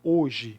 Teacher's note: Quando a gente pronuncia a palavra hoje, o H ele fica mudo, ele não é pronunciado